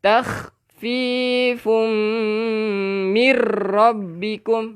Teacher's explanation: Tengok balik nota-nota yang telah kita tulis. Tanwin bertemu dengan mim. Kita kena dengung, memasukkan beserta dengung.